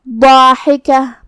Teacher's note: مد الف اپنے پیچھے والے حرف کا حکم لیتا ہے تفخیم میں اور ترقیق میں، تو جو کہ مد الف سے پہلے والا حرف ضاد ہے، تو ہم ضاد کو اور مد الف کو دونوں کو بھاری آواز میں ادا کریں گے